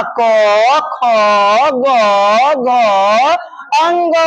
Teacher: क वर्ग, क वर्ग कंठा से चलेगा।